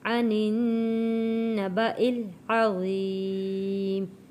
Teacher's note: عن النبأ العظیم، یا ساکن سے پہلے زیر ہے، حروف مدہ ہے، تو ہم نے حروف مدہ کو ایک الف کے برابر کھینچ کر پڑھا ہے